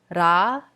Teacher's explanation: we like to roll the r almost so we feel the tip of the tongue strike the roof of the mouth